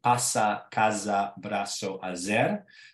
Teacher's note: But as far as other sounds and sibilants in Istanbul Judeo-Spanish, you also have a distinction between an S sound and a Z sound, which is not the same distribution that you have anymore in Spanish